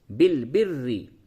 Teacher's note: را مشدد کے نیچے زیر ہے، باریک کریں گے